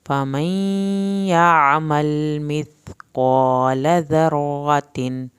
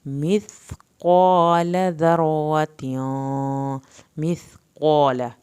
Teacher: मिस्क़ाल ज़र्रतिन, सा को آپ نے زبان کے نوک سے پڑھنا ہے، قاف کو پر کرنا ہے، لام کی زبر کو ہرگز لمبا نہیں کرنا